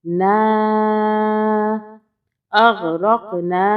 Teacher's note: نون الف زبر نا ہوتا ہے، چھوٹی مد ہے، 2 الف کے برابر کھینچیں گے